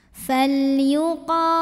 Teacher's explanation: maka ini lam sukun dibaca secara jelas falyuqo qo Mad thi'i zohiri karena ada Alif yang sebelumnya didahului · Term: lam mutlak